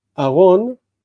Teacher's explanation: aron is normally with a reduced vowel, aron, but when it takes the article, it's ha'aron.